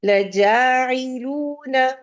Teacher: نون پہ فتحہ ہے، آپ نہ نہیں کریں گی اس کو. 1 سیکنڈ کے لیے حرکت کو صرف ادا کرتے ہیں